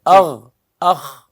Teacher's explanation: ٹھیک، اب یہ جو یعنی حلق کے جو شروع کا حصہ ہے ہم اس سے 2 حروف ادا ہوں گے، غین اور خا